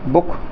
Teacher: तो बुक में भी हम ऊ का उच्चारण ह्रस्व उच्चारण में बोल रहे हैं, यानी कम समय के लिए बोल रहे हैं